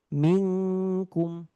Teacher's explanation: Kalau kaf lantangnya rileks, istifal atau posisi lidah dalam keadaan terhampar biasa saja.